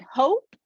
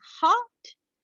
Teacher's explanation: So you have the vowel height that changes, also the rounding that changes, right? So hope is rounded and hot is unrounded.